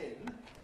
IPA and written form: pʰɪn (pin)